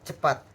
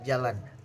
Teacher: Nah, lalu ada tingkat lidah dan langit-langit keras, yaitu peratal. Nah, tengah lidah mendekati langit-langit keras. Contohnya di huruf C seperti pada cepat.